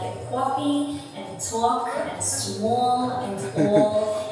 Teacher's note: for Brooklyn, you want to have a lot of lip rounding to make those O sounds